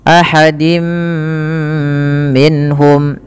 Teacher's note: Kemudian ahadim minhum, pada lafal dim minhum yaitu tanwinnya dimasukkan ke huruf mim dan ditahan. Dan inilah yang kita kenal dengan bacaan idgham bi gunnah, yaitu idghamnya memasukkan surat tanwin kepada mim dan ditahan, diganti bunyinya menjadi bunyi mim.